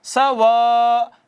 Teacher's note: اس کو مد متصل کہتے ہیں، اور اس 4 سے 5 الف کھینچتے ہیں